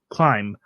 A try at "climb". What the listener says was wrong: I mean, the B is silent. Yeah, like you're climbing something. Climb. I really thought the B was silent.